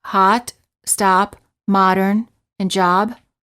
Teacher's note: the lips are apart as if you're yawning the lips are not rounded the tongue is relaxed and flat at the bottom of the mouth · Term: ah sound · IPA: /ɑ/